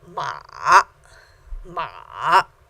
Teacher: you can hear that start low get slower goes up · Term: third tones